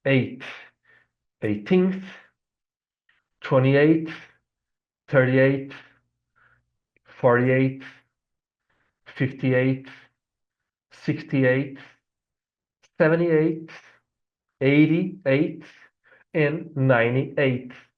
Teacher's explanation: So, we're going to replace the t by th and say pronounce 8, not 8 and then the th sound. No, we're going to replace t by the th sound